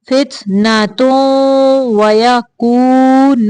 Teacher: یہاں پہ تنوین کی آواز بھی ناک میں لے کے جانے